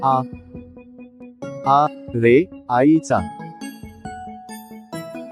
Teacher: उच्चारताना तोंड थोडं जास्त उघडून हा स्वर उच्चारला जातो.